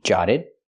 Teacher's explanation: The double t is a fast d. Jotted. And the D at the end of the verb is also a fast D.